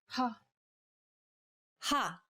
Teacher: saying this sound involves a forceful expulsion of air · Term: aspirated sounds